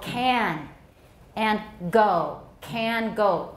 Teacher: at the beginning of for example can and go can go those are velar sounds